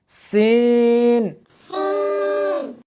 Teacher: اس حرف کو جب پڑھیں گے تو سیٹی کی آواز آنی چاہیے